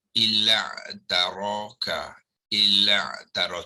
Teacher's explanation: bermakna yang hamzah wasal ni akan gugur di dalam bacaan ya. Tetapi dalam tulisan jangan pergi gugurkan ya, tak boleh.